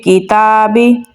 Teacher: ता को हम बारीक और लंबा पढ़ेंगे